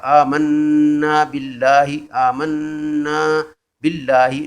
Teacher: نون پر شد ہے، شد ہے تو یہ غنہ ہوگا